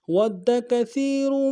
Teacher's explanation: واو کو دال کے ساتھ ملانا ہے، دال کے اوپر تشدید زور دیں گے ، اگلے دال کو نرم سے ادا کریں گے، کاف کو